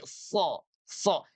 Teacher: huruf shad memiliki kualitas itbaq karena permukaan lidah, dari belakang ke tengah dan pangkal, semuanya bergerak ke atas menuju langit-langit mulut. · Bagian belakang lidah, bagian tengah, dan pangkal lidah semuanya bergerak ke atas dan menempel pada langit-langit mulut. Itulah yang disebut itbaq.